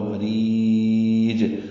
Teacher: مریج میں را باریک ہے، ری یا مدہ ہے اور اس کے بعد جیم ساکن پہ وقف کر رہے ہیں تو قلقلہ ہوگا، مریج۔ اب را کو لمبا کر دیں گے اور جیم پہ قلقلہ کریں گے، دونوں زیریں ختم ہو جائیں گی، یعنی ساکن ہو جائے گا جیم۔